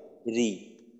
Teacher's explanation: র এর উচ্চারণ যখন জের থাকে তখন পাতলা হয়।